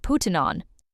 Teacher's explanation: In the recording, putting on was spoken very fast. It sounded like puttin' on. If you are not familiar with this kind of linking, it is hard to catch this phrase. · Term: connected speech